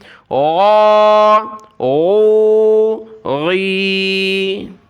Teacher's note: غین کو گلے سے نکالنا ہے. اس کی جگہ گاف نہیں پڑھنا, گا نہیں پڑھنا, بلکہ غین پڑھنا ہے.